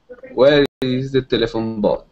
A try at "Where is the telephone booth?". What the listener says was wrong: Okay, good.